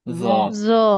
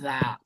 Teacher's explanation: জটা অ সাউন্ড বা ঠোট গোল করে উচ্চারণ হবে কারণ এটা মোটা হরফ